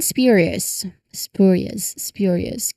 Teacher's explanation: it requires that precise quick movement from P into the Y sound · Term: SPJ